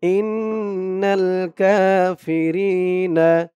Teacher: ইন এখানে ওয়াজিব গুন্না · কানু কা এক আলিফ টান নু এক আলিফ টান